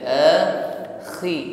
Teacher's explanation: Sekalipun dia isti'la tergolong huruf tebal, namun ketika kasrah dia jangan ditebalkan.